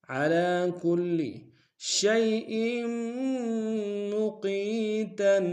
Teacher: شیء میں شین کو یا کے سامنے آئیں گے، یا لین بغیر کھینچے پڑیں گے